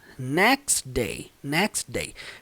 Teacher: Pelo fato do som do T ser semelhante ao som do D, vai fazer essa junção